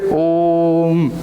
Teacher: सिर्फ ओम नहीं बोलते, ओ को थोड़ा लंबा खींचते हैं, फिर हम म बोलते हैं · आपको ओ को 3 गुना टाइम तक बोलना है। जैसे इसको उच्चारण करने में, अ को जितना उच्चारण करने में समय लग रहा है, ओ को उतना ही 3 टाइम बोलना है। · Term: प्लुत स्वर